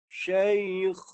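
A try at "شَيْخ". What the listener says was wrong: Kha, keluarkan huruf kha tu. Bunyi kha yang tadi. Syekh.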